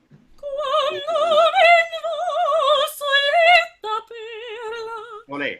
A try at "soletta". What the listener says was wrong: Sole, even less L. Soletta, longer O, longer vowel before, just a little bit longer. Soletta per la.